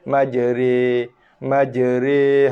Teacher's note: Tapi dia bukan atas, bukan bawah. Dia bacaan dia, baris dia tengah-tengah, baris condong. Dibaca dengan majri, majri.